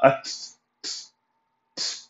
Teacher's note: only tip of your tongue will pronounce that because of the سكون in the ta